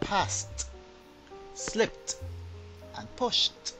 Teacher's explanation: no vibration this is known as voiceless · This is known as voiceless, and no vibration equals T. Now, this is why the following words would be pronounced passed, slipped, and pushed.